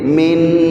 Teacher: اس نون کو غنہ کرتے ہیں، ناک میں تھوڑی سی آواز کھینچتے ہیں